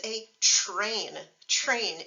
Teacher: when we put a t in front of an R it actually turns into a CH